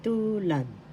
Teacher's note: Tulad. First syllable tu, second syllable lad. The first syllable has the accent.